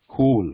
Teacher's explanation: When we pronounce this word cool, there is a h or ha element in this, cool, like that.